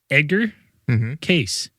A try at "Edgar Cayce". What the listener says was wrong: Casey. But you said it like it was, we're talking about Edgar Cayce. You just like fucking mushed as one. It's Casey.